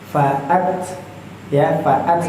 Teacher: Jadi ada kayak ts th kayak faat ada s-nya sedikit di ujungnya